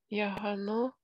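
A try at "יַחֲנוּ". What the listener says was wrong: Яхану. Хет-хет.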